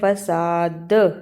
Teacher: دال پر قلقلہ کرنا ہے، یعنی حرف کو ہلا کر پڑھنا ہے